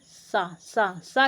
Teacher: क्या, तालव, क्योंकि जब हम इसको बोलते हैं तो हमारी जीभ जो है, हमारी जीवा जो है, वो ऊपर के तालु को टच करती है, स्पर्श करती है, तो क्या होते हैं, तालव्य सा होते हैं।